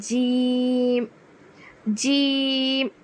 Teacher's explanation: وسط زبان بالمقابل اوپر تالو سے لگے تو جیم ادا ہوگا. لیکن ہم اپنی زبان میں بولتے ہیں جو زبان کا بیچ والا حصہ اوپر بیچ کے تالو سے لگے تو جیم ادا ہوتا ہے.